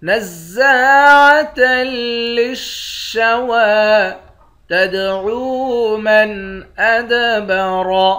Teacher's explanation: نزاعة للشوى تدعو من ادبر، تا کو دال کے ساتھ ملا کر دال پر قلقلہ کریں گے